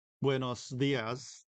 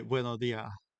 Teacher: And so the S is starting to get lost, and that causes the syllable to gain this like breathy voice quality, and that ends up lowering the tone of the syllable.